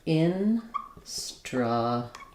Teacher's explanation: There's basically no vowel or just a very short reduced schwa for that L. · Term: syllabic L